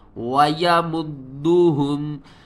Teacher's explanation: دال کو ہم نے 2 بار پڑھنا ہے، ایک بار دال کے اوپر قلقلہ کریں گے، دوسری بار دال کو حرکت کے ساتھ پڑھیں گے